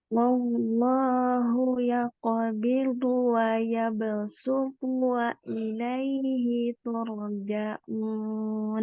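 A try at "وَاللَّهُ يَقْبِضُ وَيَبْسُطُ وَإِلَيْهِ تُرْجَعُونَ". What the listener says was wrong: Ulang lagi, hilangkan angin pada bu.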